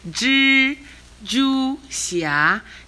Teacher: Ji and Ju are both the first tone. Xia is the second tone.